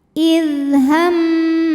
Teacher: Kemudian ada hukum namanya gunnah musyaddadah atau mim musyaddadah atau wajibul gunnah. Karena mim bertasydid, cara bacanya didengungkan.